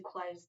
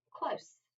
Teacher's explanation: that s can be voiced or unvoiced